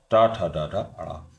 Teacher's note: मूर्धा मतलब कठोर तालु से उत्पन्न होने वाली ध्वनि है ट ठ ड ड ण।